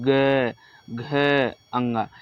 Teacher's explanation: ये जो हमारे क वर्ग के जो अक्षर है ये हमारे कंठ से निकलते हैं